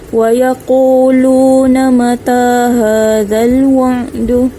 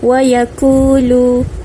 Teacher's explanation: Pastikan kita baca tebal huruf qaf ini, bukan wa yaqulu, itu salah, kita baca dengan tebal huruf qaf. Wa yaquluna, lam baris depan jumpa dengan waw, baca panjang 2 harakat.